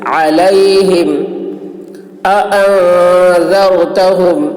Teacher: یہاں پر ان میں اخفا ہو رہا ہے، نون کے آواز کو ناک میں لے جا کر چھپا کر گنگنائیں گے. اانذر، ذال کی آواز باریک اور را پر ہوگی.